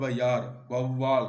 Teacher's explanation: அவு என்னும் அவுகார எழுத்து தனித்து வரும் இடங்களில் தனக்குரிய 2 மாத்திரை அளவில் முழுமையாக ஒலிக்கிறது. ஔவையார், வௌவால் என சொற்களின் முதலில் வரும்போது தனக்குரிய 2 மாத்திரை அளவிலிருந்து குறைந்து 1.5 மாத்திரை அளவில் ஒலிக்கிறது. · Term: அவுகார குறுக்கம்